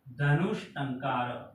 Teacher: ये ट मूर्धन्य है, तो स भी कौन सा आएगा, मूर्धन्य।